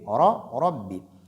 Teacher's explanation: quand Ra porte Fatha, elle est lue de façon emphatique. Donc avec emphase et bitafkhim.